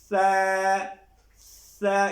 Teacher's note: ثنایا علیہ کے اندر کے کناروں سے، جیسے یہ دیکھو سا، اس کے اندر سیٹی بالکل نہیں آئے گی